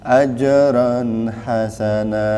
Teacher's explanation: Jimnya ajran, tengah lidahnya naik kan?